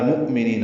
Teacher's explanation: وللمؤمنین لام ساکن پہ اظہار ہے، مؤمنین حمزہ ساکن جھٹکے سے ادا ہوگا، نی یا مدہ ہے.